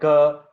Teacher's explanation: इसमें हो क्या रहा है कि आपकी जो फ्रंट ऑफ टंग है that is moving towards the soft palate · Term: व्हीलर